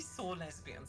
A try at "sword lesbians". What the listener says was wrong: It does sound like you say saw. Like, sword. Okay, now I hear it.